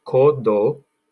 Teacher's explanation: when you use the d it goes between your teeth your tongue goes between your teeth